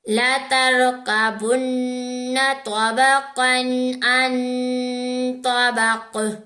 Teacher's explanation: قاف کو موٹا اور قلقلہ دونوں کریں گے